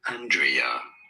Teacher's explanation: So this really, Andrea, with an emphasis on the first syllable